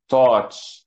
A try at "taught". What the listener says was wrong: Taught. T. It's a T in the beginning and a T in the end, and it's one. taught. taught. Because you say thoughts all the time. I thought, right? I thought this and I thought that. yeah, but now change the first letter.